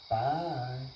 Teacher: her vocal intonation would go up and then come back down like in the middle